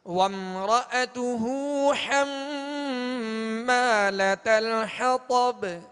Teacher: حما میں میم مشدد ہے، نون میم مشدد میں ہمیشہ غنہ کریں گے